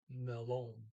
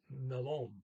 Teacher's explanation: You got to put the accent on the second syllable, melon. There's two L's in there, as of almost, like there's no exception.